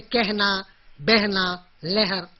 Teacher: बाकी सब जगह अ का उच्चारण होगा, लेकिन ह के पहले इसका उच्चारण ए जैसा हो जाएगा